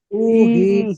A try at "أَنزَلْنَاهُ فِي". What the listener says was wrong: হু টান দেবেন না, হুফি। দেখেন ইন্না আনজালনাহু ফি এই নুন খাড়া যাবার না, এখানে টান দেবেন আনজালনাহু ফি